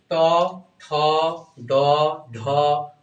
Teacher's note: জিবাটা হচ্ছে তালুতে লাগতেছে না মূর্ধতে লাগতেছে। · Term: মূর্ধ বর্ণ